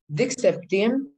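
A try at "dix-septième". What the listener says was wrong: We don't say dix. Now, we say like this. This septium.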